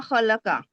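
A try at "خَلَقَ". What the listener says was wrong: खलक का नहीं, खलक का नहीं, क। और खा हुरूफ मुस्तालिया से है, पूरा माउथ भर के पढ़िए।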